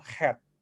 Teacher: ini bunyi glottal yang datang daripada tekak dan juga di ujung lidah, bukan di pangkal lidah kamu